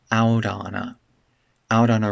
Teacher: This t connects together, it becomes a flap.